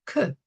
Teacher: We feel it articulated inside the throat, whereas k, above, dot above a line, is articulated in the upper palate